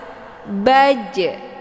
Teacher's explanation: Nah, jim ini merupakan sifatnya qalqalah. Jadi dipantulkan, ditekan kemudian dilepas.